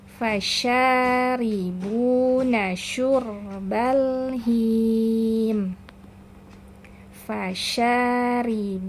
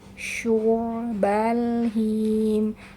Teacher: dah dan berdekatan dengan huruf ro yang dibacanya tebal ya jadi jangan sampai huruf syinnya ikutan tebal